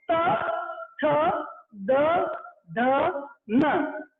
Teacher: त वर्ग का जब उच्चारण करोगे आप तो आपकी जो जीभ है वो अंदर की तरफ ऊपरी दांत की पंक्ति के भीतरी हिस्से को छूती है। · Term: दंतव्य वर्ण